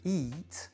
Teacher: eat est un verbe d'une seule syllabe lexicale, donc on va bien faire un i long